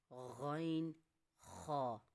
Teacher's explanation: حلق کے شروع والے حصے سے غین خا